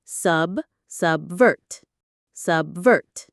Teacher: The stress is on the second syllable.